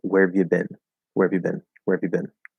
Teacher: i noticed that the rs get weaker in fast speech